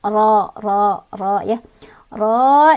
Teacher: Ro-nya punya hukum tafkhim karena ro-nya berbaris fathah. Artinya dibacanya tebal, seolah-olah bunyi huruf ro ini memenuhi semua rongga mulut. Ro ya. Ro, dan juga ini ada hukum mad tabi'i karena ada alif, sebelumnya ada fathah di huruf ro ya, dibacanya panjang 2 harokat.